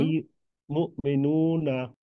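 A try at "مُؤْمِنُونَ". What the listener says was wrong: Good.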